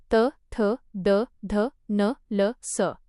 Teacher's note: दंत्य दातांना स्पर्श करून